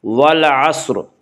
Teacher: عین یا حروف قمری میں سے ہے، عین سے پہلے الف اور لام ہے، اسے صرف لام کو پڑھا جائے گا، الف کو نہ پڑھیں گے۔ والعصر، صاد کو پر پڑھیں گے، صاد حروف مستعلیہ میں سے ہے